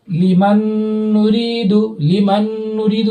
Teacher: نون ساکن ہے، اس کے بعد نون آ رہا ہے، تو یہ نون میں مرج کر کے پڑھ رہا ہے، غنہ بھی ہو رہا ہے. تو اس اعتبار سے یہ ادغام مع الغنہ اور ادغام ناقص ہے.